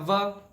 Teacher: दंतोष्ठ मतलब दांत और होठों की सहायता से जो अक्षर हम बोल पाए, वो हो गया व।